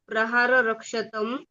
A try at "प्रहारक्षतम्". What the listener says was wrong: नहीं, एक ही रह है ना, प्रहार क्षतम। नहीं, अर्थ बदल जाए, प्रहार क्षतम। र कहाँ है, प्रहार क्षतम।